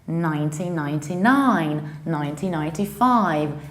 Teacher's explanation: Whenever we have a year, we need to stress actually the very last word.